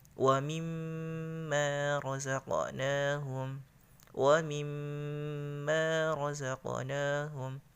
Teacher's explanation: Mim yang berharakat syaddah atau tasydid didengungkan setara dengan mad tabi'i, satu alif atau dua harakat. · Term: gunnah